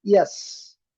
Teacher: Ele tem esse som de I curto, que parece um J, mas na transcrição fonética ele funciona como I. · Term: Y com som de I